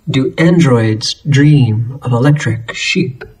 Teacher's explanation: each unstressed syllable followed by a stressed syllable and the run of D sounds and long E's